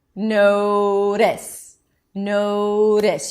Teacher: You keep the voice going. This is why it sounds to you like a D, but it's not really a D. · what the tongue does is it comes up to touch the upper pallet and instead of blocking the air and releasing, it kind of gives the upper pallet a high five. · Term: flap T